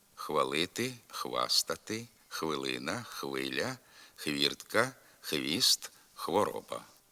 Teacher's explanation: як один звук ф фалити фастати филина Филя Фіртка фіст фороба така вимова також є порушенням літературних норм звукосполучення хв Що на письмі передається буквами х і в та треба зберігати і в вимові